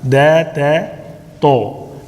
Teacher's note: جہاں پہ آپ کے ٹپ آف یور ٹنگ جو ہے، جہاں پہ دانت اور آپ کے گمز جو ہیں، ٹیتھ اور گم جو ہے سیپریٹ ہوتے ہیں، وہاں پہ اپنے زبان کی نوک کو لگائیں گے تو وہ دا کا مخرج ہے، ٹھیک ہے نا، دال کا، دے تے تو، ٹھیک ہے۔ ان سب کا تینوں کا ایک مخرج ہے، لیکن تو موٹا پڑا جاتا ہے، تے یہ باریک، اور دے یہ دال بھی باریک پڑا جاتا ہے، ٹھیک ہے۔